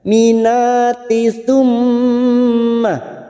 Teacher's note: mim yang bertasdid gunna musaddadat 3 harokat kita tekan